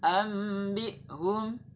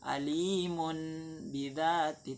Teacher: mengganti nun mati menjadi mim mati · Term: iklab